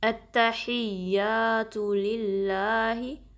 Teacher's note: अल्लाह का नाम बारीक पढ़ेंगे